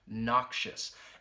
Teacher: has two syllables that first syllable that knock and then shus that schwa sound you hear that in the second syllable